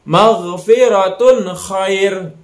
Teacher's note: Nah, jadi dibacanya jelas antara tun kha itu kan. Jadi jelas antara tanwin domah dengan kha itu.